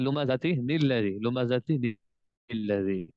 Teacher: جب آپ نے آگے ملا کے پڑھنا نا تو لومزۃ الذی نہیں پڑھیں گے، وہاں پہ نون کا اضافہ کر دیں گے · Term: نون قطنی